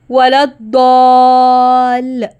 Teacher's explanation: داد حروف مستعلیہ میں سے ہے، تو الف کی آواز بھی موٹی پڑھی جائے گی